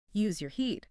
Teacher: The short relaxed e in head or dead is tightened and lifted into a long e sound. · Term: the e shift